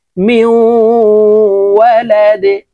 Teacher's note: ডাল যেহেতু কলকলার হরফ ধাক্কা দিয়ে উচ্চারণ করতে হবে, নিচের দিকে ধাবিত করে ধাক্কা দিয়ে উচ্চারণ করতে হবে